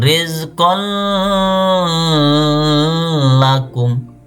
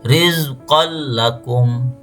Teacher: tapi tanwinnya ini dimasukkan ke huruf lamnya